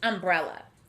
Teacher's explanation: notice that this word starts and ends with the uh sound but the first uh sound is a short u as we